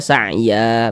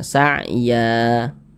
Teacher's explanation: panjangnya sama dua harakat